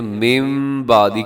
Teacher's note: اور اسی طرح کے دیکھیے گا لفظ لکھا ہوا ہے من بعدی، لیکن ہم پڑھتے ہیں من بعدی، کیونکہ نون ساکن کے بعد بعدی کے شروع میں با آ رہا ہے، تو نون ساکن کی جگہ پہ ہم میم پڑھ دیتے ہیں۔ تو اس بدلنے کو اقلاب کہا جاتا ہے۔